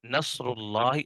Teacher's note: یہاں پر را کے اوپر پیش ہے، اس وجہ سے را کو ہم موٹا پڑھ رہے ہیں